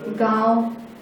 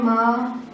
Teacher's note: तो ऐसे वर्ण जिसमें इस चिन्ह का उपयोग किया गया है, मतलब वो क्या है, अनुनासिक है। अनुनासिक का उच्चारण नाक और मुंह दोनों से किया जाता है।